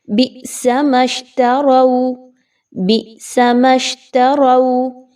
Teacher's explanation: حمزہ کے اوپر جزم کی علامت ہے تو ہم اس کو جھٹکا دے کر پڑھ رہے ہیں۔ جہاں کہیں پر بھی حمزہ کے اوپر جزم کی علامت آ جائے گی وہاں پر اس کو جھٹکا دے کر پڑھا جائے گا، آواز کو ڈھیلا ڈھالا نرمی سے نہیں پڑھا جائے گا۔ · میم کو ڈائریکٹ شین کے ساتھ ملائیے، تروا، رو کی ادائیگی اچھے سے رکھیے۔